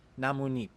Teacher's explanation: This is because shiot in the patsim becomes digut, and when digut runs into an iung, a nasal character, it becomes nian